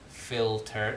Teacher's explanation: But then you're going to have the T, filter, so you're going to have contact with, because your tongue is going to be against your alveolar ridge to pronounce the T